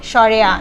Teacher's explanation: স্বরেটা উচ্চারণের সময় আমাদের ঠোঁটটা পুরোপুরি খুলে যাচ্ছে, অর্থাৎ এটা বিবৃত।